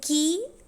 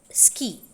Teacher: find an aspirated stop there but in ski it is unaspirated aspirated with a strong forceful expulsion of air air particles an aspirated there is no strong expulsion of air